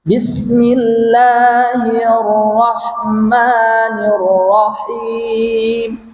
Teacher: Ra itu tidak dua kali getaran dia, sekali je.